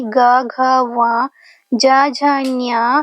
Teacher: विसर्ग और अर्ध विसर्ग ये सभी सवार, नाद और घोष के अंतर्भुक्त हैं। जब हम ग, घ उच्चारण करते हैं एक नाद या एक गूंज सुनाई देती है